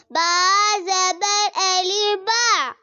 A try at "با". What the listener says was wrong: غلط، الف کو آپ نے لمبا